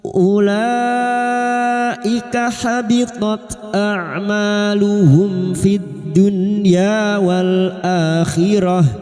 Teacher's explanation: Ulaika bertemu mad dengan hamzah dalam satu kalimat mad wajib mutasil 5 harakat kita panjangkan